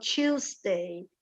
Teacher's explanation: It's more like a ch. It's something in between our T and our ch.